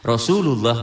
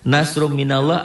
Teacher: lafaz Allah dibaca tafkhim dibaca tebal berbunyi o